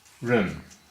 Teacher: Run is second tone, that's a rising tone, as seen by the line on top there.